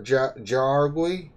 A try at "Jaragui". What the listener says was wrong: No, it'll be pronounced as an H. The J is pronounced as an H.